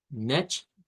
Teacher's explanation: con un shua y una n al final